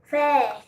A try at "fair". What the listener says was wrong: Fair. How did you get fair?